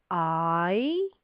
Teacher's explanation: So that lovely I, and the tongue goes down, up. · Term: I sounds